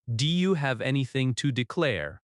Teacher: In natural speech, Do you often sounds like D U.